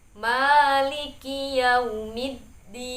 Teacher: Di ayat keempat ini perhatikan matnya lafadz ma. Ma di sini mad tabi'i satu alif. Jadi cukup maliki yaumiddin.